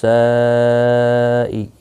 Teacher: یہاں پر مد متصل ہے، چار الف کی مقدار کے برابر کھینچ کر پڑھیں گے